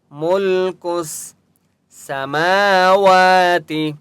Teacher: میم اور واو دونوں کے اوپر کھڑا زبر ہے اس لیے دونوں کو ایک ایک الف کی مقدار کھینچ کر پڑھیں گے